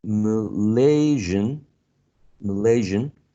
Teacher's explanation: very relaxed MidCentral vowel sound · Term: schwa